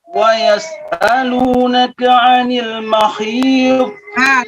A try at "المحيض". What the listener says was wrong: Ha. Bukan kha.